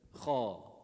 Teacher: You use the back of your tongue. The back of the tongue, when it lifts up, it makes it heavy.